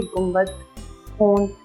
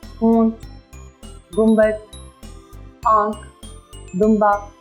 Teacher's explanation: अक्सर ये अल्फाज के दरमियान में लिखा हुआ आता है जिसमें हम इसे नुक्ता डाल देते हैं, लेकिन आवाज़ इसकी फिर भी मध्यम और मादूम ही होती है, जैसे कि गुंबद, होंठ, हल्का सा हमने पूरा नून ही बोला, पूरा ना नहीं बोला, हमने नून की मुकम्मल आवाज़ नहीं निकाली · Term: नून गुन्ना